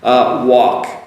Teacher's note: So walk, W-A-L-K, give you the spelling anyways. Walk, so you start off with the oo sound, work as well, oo.